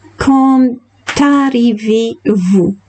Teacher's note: the D connects to the A after and makes the sound T.